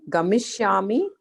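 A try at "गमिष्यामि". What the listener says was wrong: The yakara should be a little bit more clear. Gamishyami. The ya was not clear. So you make it a little bit more conspicuous.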